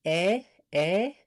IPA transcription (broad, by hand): e